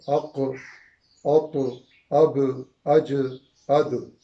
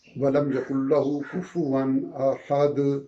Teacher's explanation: تو اب ہم اس کو پڑھیں گے تو اق، اوق، اب، اج، اد، جیسے سورہ اخلاص کے آخری آیت کو وَلَمْ يَكُنْ لَهُ كُفُوًا أَحَدٌ، دال پہ جب وقف کی وجہ سے دال کو ہم ساکن کریں گے تو وہ جو آواز آتی ہے اس کو کلکلا کہتے ہیں